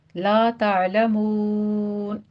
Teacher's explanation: لا تعلمون، لا میں الف مدہ ہے، 2 کاؤنٹ کریں گے، مون میں مد عارض وقفی کریں گے، یہاں پہ 6 کاؤنٹ کرنا ہے